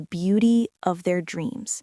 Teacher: You really captured the rising intonation on dreams.